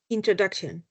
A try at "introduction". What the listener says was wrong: If you round your O more it's going to be easier.